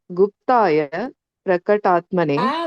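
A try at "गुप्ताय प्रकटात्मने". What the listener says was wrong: வேண்டவே வேண்டாம், போடவே இல்லை, விசர்க்கமே இல்லையா அங்க. விசர்க்கம் இருந்தா தானே நீங்க சொல்லணும். இப்ப நீங்க குப்தாய அப்படிலாம் சொல்லாதீங்க.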